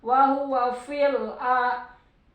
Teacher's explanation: alif lam komarnya jadi harus kedengaran L-nya